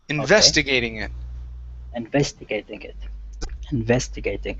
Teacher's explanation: the stress is on the ves